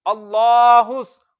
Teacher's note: साद हुरूफे मुस्तालिया में से है, तो इसको हमने हर हालत में मोटा पढ़ना है